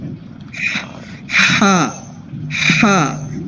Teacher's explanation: تو جب آپ کی سانس کی جو آواز ہے نا وہ بالکل اسی حصے سے آتی ہے جو آپ کا حلق کے درمیان والا حصہ ہے